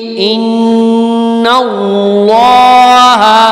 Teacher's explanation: اب اللہ کا نام سے پہلے زبر آ گئی ہے اس لیے اللہ کا نام میں نے موٹا کر کے پڑھ لیا ہے